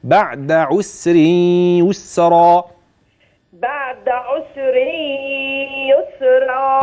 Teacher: الرواية الأصل فيها إسكان السين في كل القرآن في كلمة عسر ويسر